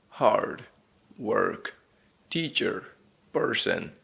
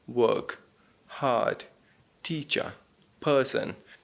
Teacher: American accent is a rhotic accent, which means you must enunciate the R sound and you must say it deep